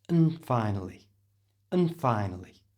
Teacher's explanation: don't pronounce the D, it's silent, and the A at the front becomes the schwa sound, so and is pronounced n.